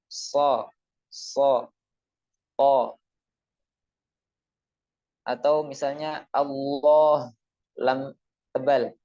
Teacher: o semuanya adalah fathah akan tetapi dengan tambahan menambahkan suara yaitu dengan menaikkan suara ke langit-langit atas dengan mengangkat pangkal lidah sehingga suara tidak langsung keluar dengan leluasa akan tetapi naik ke langit-langit atas dan mengakibatkan suara yang tebal